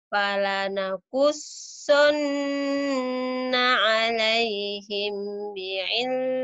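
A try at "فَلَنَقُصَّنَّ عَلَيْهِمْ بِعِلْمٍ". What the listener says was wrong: Ditahan 'alaihimnya. Kan ini bahasa Pawi, kamu iya-iya aja. Ditahan, ditahan, tahu ditahan. Ada panjangnya. Nah, kunananya kan panjang juga. Kunnya udah bener, nanya ditahan juga.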